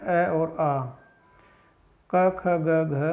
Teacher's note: ये सभी वर्ण कंठ से बोले जाते हैं, अतः इन्हें कंठ्य वर्ण भी कहते हैं